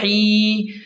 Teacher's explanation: یہاں پر حروف حلقی میں سے ہا ہے تو اسے حلق کے درمیان سے صاف نکالیں اور یا مدہ کو ایک الف کے برابر کھینچ کر پڑھیں.